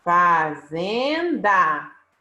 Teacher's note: Fazenda a sílaba tônica cena então nós temos o número 2 uma paroxítona porque é a penúltima sílaba que é tônica